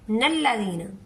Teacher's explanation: अगर वक्फ करेंगे तो नेक्स्ट वर्ड को अल्लाह दीना पढ़ेंगे, अगर वक्फ नहीं करेंगे तो हम इसको मिलाकर पढ़ेंगे नल्लदीना